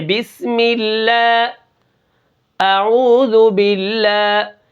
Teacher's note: اللہ کا نام باریک ہے کیونکہ اللہ کے نام کے پیچھے کیا ہے؟ زیر آ گئی